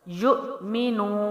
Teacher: واو ساکنہ سے پہلے نون کے اوپر پیش ہے تو واو مد ہے، تو نو کو ہم ایک الف لمبا کریں گے۔